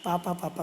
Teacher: बच्चा सबसे पहले अपने दोनों होठों को सटा करके वर्ड बोलने का प्रयास करता है, और उसके ओठ से पा वर्ण निकलता है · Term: पा वर्ग